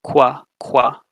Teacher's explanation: labialization, which is basically just saying you need to round your lips, and it's written with a small W in the corner.